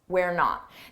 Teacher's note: this is a contraction, we are, and notice how unstressed it is